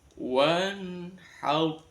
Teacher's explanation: Sebelum ro sukun ada huruf berharokat fathah, maka ro-nya dibaca tafkhim, tebal.